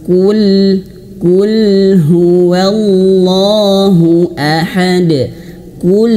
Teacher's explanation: huruf lam ketika dia sukun, ketika dia mati mengalir sedikit. Qul jangan terputus.